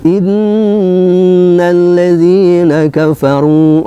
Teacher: nun bertasydid yang didahului harkat kasroh ya adalah bacaan guna dibaca dengung dua harkat